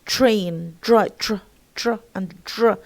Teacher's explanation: In train and drain, we find that it becomes affricated somehow, affricated somehow.